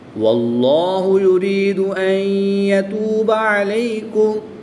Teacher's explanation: نون ساکن کے بعد یا حروف یرملون میں سے ہے تو یہاں پر ادغام مع الغنہ ہوگا۔ نون ساکن کو یا میں مدغم یعنی شامل کر کے پڑھیں گے، اور حمزہ متحرک کو یا مشدد کے ساتھ ملا کر پڑھیں گے۔